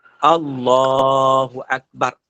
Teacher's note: A pendek, bar pendek. Tak boleh panjang.